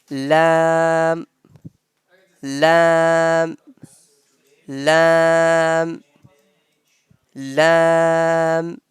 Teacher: From the edge of the tongue and the part of our palate, which is quite near to our upper front teeth.